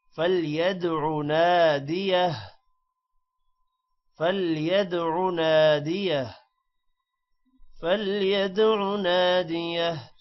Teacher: Nadia اب ہا پر الٹا پیش ہے، وقف کی وجہ سے یہ صرف ہا پڑھا جائے گا، الٹا پیش نہیں پڑھا جائے گا